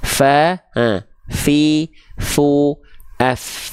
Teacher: Ujung gigi sari atas kita sentuhkan dengan bibir bawah bagian dalam bawah kita.